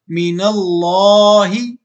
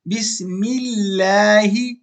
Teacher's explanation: اچھا یہ بات میں نے آپ کو پہلے بھی بتائی تھی کہ لفظ اللہ سے پہلے اگر زبر ہو تو اس کو موٹا پڑھیں گے، لفظ اللہ سے پہلے اگر پیش ہو تو اس کو موٹا پڑھیں گے، اور اگر لفظ اللہ سے پہلے زیر ہو تو لفظ اللہ کو پتلا پڑھیں گے